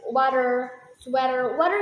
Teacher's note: usually in American English, when the T is between two vowels, the T need to change into D. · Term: change T to d, change T to D